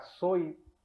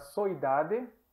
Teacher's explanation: t para d solit o l intervocálica então vai ficar soit esse T vai sonorizar